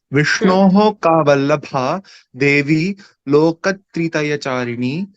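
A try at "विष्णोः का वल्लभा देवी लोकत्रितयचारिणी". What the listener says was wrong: Samyak.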